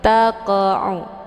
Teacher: Cara bacanya, huruf qafnya dipantulkan dengan pantulan ringan. Taqa'u, keluar bunyi qa sekedar saja. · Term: qalqalah sughra